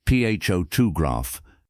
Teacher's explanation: in the word photograph, the stress is on the first syllable